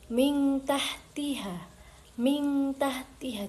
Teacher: cara membacanya dibaca samar, dengung dan dua harakat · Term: ikhfa, ikhfa hakiki